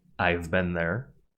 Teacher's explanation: Have becomes ‘ve like “I’ve been there.” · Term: weak form